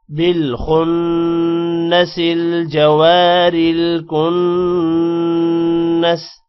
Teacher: اب یہاں پر را کو موٹا نہیں کرنا کیونکہ را کے نیچے زیر ہے. بالخن نون پر غنہ کرنا ہے، کن یہاں پر بھی نون پر غنہ کرنا ہے.